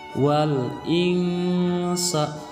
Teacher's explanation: Cara membaca, alif lamnya dibaca jelas menjadi wal. Kemudian huruf nun sukunnya dibaca samar menjadi wal insa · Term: ikhfa hakiki